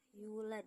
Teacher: qalqalah kubro karena huruf dal di akhir ayat sukun karena waqaf, pantulannya kuat